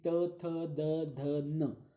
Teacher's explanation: हमारी जो जीभ है, जो रसना है, वह दांतों को स्पर्श करती है। अगर वो दांतों को स्पर्श नहीं करते हैं तो त थ द ध न हम बोल ही नहीं सकते। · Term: दंत्य वर्ण